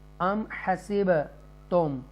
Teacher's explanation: یہاں پر حروف قلقلہ با آ رہا ہے جزم کے ساتھ تو ایکو ساؤنڈ کے ساتھ پڑھیں گے